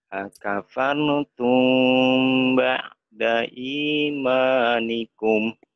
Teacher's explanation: cara bacanya ikhfa syafawi ditahan dua ketukan ya